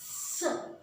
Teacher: और ये है दंत स, दोनों दांतों के बीच में जिह्वा का स्पर्श से इसका उच्चारण होता है